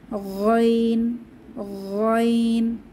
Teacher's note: গাইন কণ্ঠনালীর শেষ ভাগ থেকে আওয়াজকে পেঁচিয়ে গাইন উচ্চারিত হয় গাইনের মাখরজ খ এর মত খ এবং গাইন কণ্ঠনালীর শেষ ভাগ